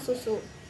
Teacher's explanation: Indonesia itu ada huruf s huruf s ini adalah bunyi mati untuk membunyikan huruf s pita suara itu tidak melakukan gerakan membuka dan menutup